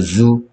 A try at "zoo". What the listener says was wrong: 어디가 잘못됐죠? 오오는 우입니다. 우 유가 아니고요. 오오는 우예요.